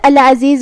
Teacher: عین کو ہم حلق کے درمیان والے حصے سے ادا کریں گے. آخری میں زا کے نیچے زیر ہے تو ہمیں زا کو زیر سے ادا کرنا ہے.